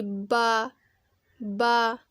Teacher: और जो गीले वाला हिस्सा होगा वो दोनों होठों के गीले हिस्सों से बा की आवाज़ निकलेगी